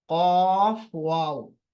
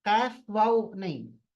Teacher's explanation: फा, कॉफ, वाव and मीम। कॉफ मोटा है, फा वाव मीम बारीक है